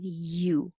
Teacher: making the vowel u uh maybe an ew as ooh but starting with your tongue in a high position sliding down